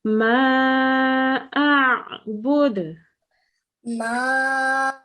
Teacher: the ayn comes from the middle of the throat and it tightens, while the alif is an ah.